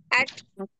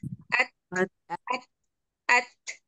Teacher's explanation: Jadi ada at yang kuat lalu keluarkan nafasnya. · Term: hams